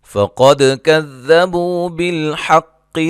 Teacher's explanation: قاف کو موٹا دال پہ قلقلہ